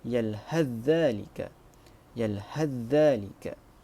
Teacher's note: membaca dengan idgham huruf ta kepada huruf zal apabila wasal